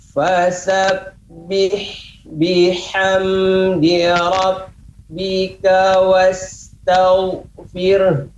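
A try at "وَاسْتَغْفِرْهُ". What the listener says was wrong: Ya, ini ada ha, maka pengucapan tadi ya, wastaghfir. Ada di ujungnya juga keluar nafas. Ya, saya akan contohkan yang pertama tidak keluar nafas, cukup wastaghfir. Ya, berarti kita menghilangkan huruf H, menghilangkan satu huruf dalam Al-Quran. Wastaghfir. Nah, itu kurang tepat. Tapi pengucapannya harus diberikan H. Wastaghfir. Wastaghfir. Juga tidak boleh jangan sampai wastaghfir. Fir. Nah, juga tidak tepat. Wastaghfir.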